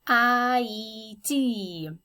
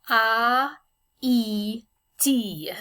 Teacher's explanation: that except that in french haiti is pronounced as i d the h is silent as it is in many french words and the a and the i are supposed to be pronounced separately and distinctively in english we sort of roll it together into one sound